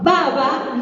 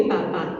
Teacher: la diferencia es que una es sonora y otra sorda. Prueben, si ponen la mano en la garganta van a ver. · B y P. Ambos son bilabiales, porque se pronuncian con los 2 labios.